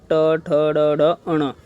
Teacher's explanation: और मूर्धा में क्या है, हमारी जीभ जो है बोलते समय इन वर्णों को ट, ठ, ड, ढ, अण, तो इन शब्दों को बोलते समय हमारी जीभ क्या होगी, मुड़ेगी, पीछे की ओर मुड़कर फिर आगे आएगी, ठीक है। तो इन शब्दों को हम मूर्धा बोलते हैं।